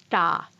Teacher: produced by pushing the tongue against the front teeth da and one produced by curling the tongue back and flipping the underside against the roof of the mouth da and now you as an adult English speaker can't hear